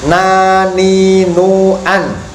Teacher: Huruf nun makhrajnya adalah ujung lidah terkena gusi.